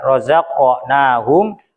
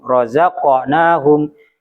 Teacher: Razaqnahum. Jadi qafnya pantulannya juga ditebalkan. Razaqnahum bukan rozak. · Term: qalqalah